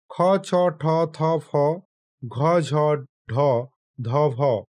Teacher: যে ব্যঞ্জন বর্ণগুলো উচ্চারণ করতে গিয়ে প্রাণ বাহুর বেশি খরচ হতো। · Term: মহাপ্রাণ ব্যঞ্জন